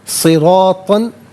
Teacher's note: را پر زبر ہے، را کو پر کر کے پڑھیں گے، تو پر دو زبر کی تنوین، اس کے بعد سین حرف اخفا ہے تو تنوین کو اخفا کے ساتھ پڑھیں گے۔